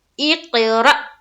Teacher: را میں حمزہ ساکینہ کا جھٹکا ہوگا، دیکھیے یہاں حمزہ ہے نا، حمزہ اور اس کے اوپر ساکین ہے یعنی کہ جزم ہے، تو ر، اقرأ، اجرا کس طرح کریں گے؟